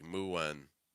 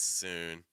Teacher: we see a couple words here with the oo sound linking with an N. Make sure you're not adding a vowel sound in between it.